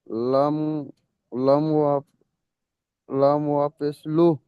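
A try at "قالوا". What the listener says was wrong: লাম ওয়াও পেশ, এখানে আপনি পড়লেন লাম ওয়াও পেশ লু, যে কাফ নয়, যে কফ, গোল কফ এটা, জি।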